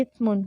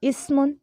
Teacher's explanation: تو دونوں میں فرق اسی طرح سے ہوگا کہ سا پڑھتے ہوئے سٹی نہیں آئے گی، سین پڑھتے ہوئے سٹی آئے گی